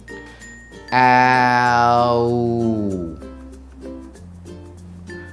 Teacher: now let's combine these two vowel sounds to make the diphthong start by saying the first vowel sound ah and sliding it to the next sound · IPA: /aʊ/